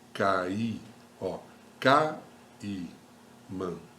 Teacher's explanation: O A primeiro é forte, né? O I é mais fechado, tá bom? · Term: ditongo